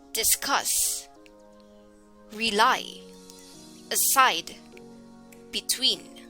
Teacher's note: the stress would be on the second syllable